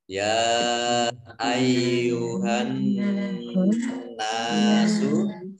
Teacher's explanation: Kemudian alif lam syamsiyah tidak dibaca, langsung masuk ke huruf nun, ya, ditandai dengan nun tasdid, dibaca gunnah atau mendengung, ditahan 2 harokat